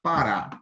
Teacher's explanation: onde a sílaba tônica, ela é a última sílaba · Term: oxítonas